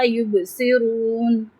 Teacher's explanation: یبصرون با پہ قلقلہ کریں گے، با ساکن ہے